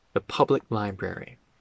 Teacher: We won't pronounce the k in public.